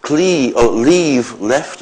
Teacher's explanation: the [v] at the end of leave becomes f by voicing assimilation